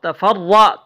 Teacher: تا کو ہم باریک پڑھیں گے را کو ہم موٹا پڑھیں گے